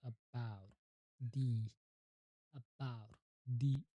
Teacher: the most common and neutral sound, the tongue is completely at rest